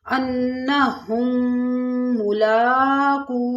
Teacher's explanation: یہاں پہ تھوڑی دیر آواز بند کریں گے کیونکہ ادغام ہوگا، میم ساکن کے بعد میم آ رہی تو ادغام۔